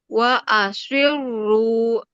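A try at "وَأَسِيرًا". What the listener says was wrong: Nah, sin. Jangan jadi shot. Nah, si biasa. Buka. Senyum.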